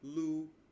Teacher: first tone would be straight across, Lu. The second tone would be upwards, Lu.